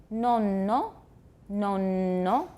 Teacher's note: that n is lengthened it's about twice as long as it would be if it were not a geminate that's called a geminate geminate I think we mentioned it before